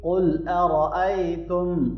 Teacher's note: قاف کو موٹا پڑھیں گے اور را کو بھی موٹا پڑھنا ہے، اور یہ یا لین ہے، اس کو نرمی سے پڑھیں گے۔